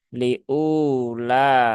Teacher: U-nya dibaca panjang 2 harokat ya. Cukup 2 harokat, jangan panjang-panjang ya. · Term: Mat asli